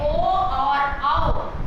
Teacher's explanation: ओ और औ, ये जो हमारे दो वर्ण हैं वो कंठ और ओष्ठ से उच्चारित होते हैं। देखो लिखा है कंठोष्ठम, कंठ और ओष्ठ से।